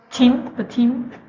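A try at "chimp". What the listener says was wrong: Chim, not team, chim.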